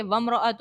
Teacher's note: میم ساکن کے بعد رو ہے، اظہار شفوی کا قاعدہ ہوگا، غنہ نہیں کریں گے۔ ہاؤ کے اوپر جو ہے الٹا پیش ہے تو اس کو کھینچ کر ادا کریں گے، بہت سی خواتین اس میں غلطیاں کرتی ہیں، کھینچتی نہیں ہیں۔